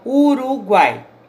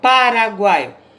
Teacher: uma combinação de três vogais numa sílaba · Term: tritongo